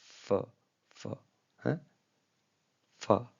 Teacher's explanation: जो फ व साउंड होता है लेब डेंटल उसमें भी अपर टीथ आपके इवॉल्व होते हैं